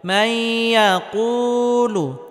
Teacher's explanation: মাই নুন সাকিনের পরে ইদগামে বা গুন্নার হরফ ইয়া আসার কারণে নুন সাকিনকে ইয়ার সাথে গুন্নাহের সাথে মিলিয়ে পড়তে হবে